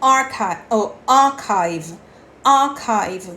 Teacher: você vai prolongar o som do ar e você não vai pronunciar o r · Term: pronúncia britânica